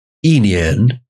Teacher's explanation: Before a second tone, like in this word, yi nian, you can hear it becomes fourth tone, yi nian, that the tone of E falls